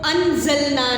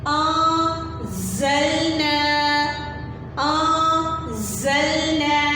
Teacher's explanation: ہم نون کی آواز کو چھپا دیتے ہیں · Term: اخفاء